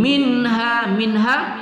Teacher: nun sukun bertemu ha tidak kita dengung pada izhar halqi